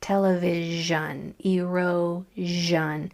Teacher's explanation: S-I-O-N usually says jun, like television, erosion. It's a vibrating SH sound, zh.